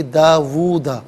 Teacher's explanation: اچھا داوودا، وو جب پڑھیں گے تو اس میں واو کی آواز ہوگی، الٹا پیش ہے تو ایک الف کی مقدار کھینچ کر پڑھیں گے